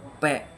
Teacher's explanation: Bibir penutup ledakan udara keluar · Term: letupan